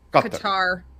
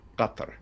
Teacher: the Q is a glottal stop